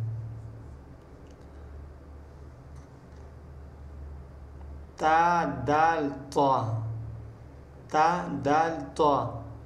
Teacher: ज़बान की नूक और ऊपर के दांतों की जड़ से